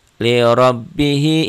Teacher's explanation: Liurabbihi, hi-nya mansilah qasirah. Ro-nya tabkhim ya, tebal ya ini ya. Ro-nya dibaca tebal.